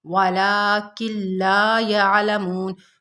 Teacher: ولکن لا میں ادغام بلا غنہ ہو رہا ہے، اور لا میں الف مدہ ہے، یعلمون میں واو مدہ ہے۔